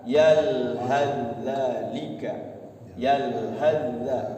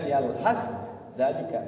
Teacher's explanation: Jadi ketemunya langsung masuk pada huruf za. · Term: idgham mutaqaribain